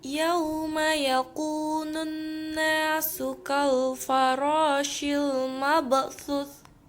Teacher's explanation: Karena terdapat tanda baca fathah bertemu dengan waw mati. Cara membacanya sekedar lunak dan lemas.